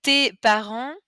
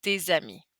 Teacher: the S is normally silent, but if there's a vowel that follows, we bring out that sound as a little z